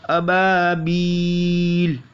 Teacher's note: बा अलिफ ज़बर बा में अलिफ मद्दा होगा, तो यहाँ पर हमें इसको खींचना है एक अलिफ तक, अबाबील। अब यहाँ पे मद्दे आरिज़ है, वफ़ की वजह से लाम साकिन हो जाएगा।